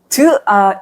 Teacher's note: tu is a sound between D and T, but it is closer to T.